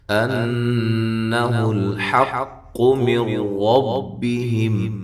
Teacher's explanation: ان نون مشدد پہ غنہ ضروری ہے، حمزہ کو تحقیق کے ساتھ ادا کریں گے۔